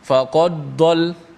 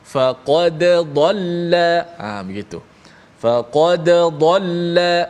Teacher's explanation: Bacaan dimatikan dal, makna kena bunyi qalqalah lah.